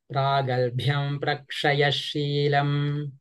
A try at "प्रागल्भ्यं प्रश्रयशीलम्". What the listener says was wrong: प्रश्रयश you're saying prak you're saying prak there is no ka prashra